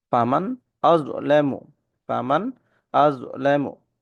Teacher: এখানে নুনে গুন্না হবে না হামজার উচ্চারণটা স্পষ্ট হবে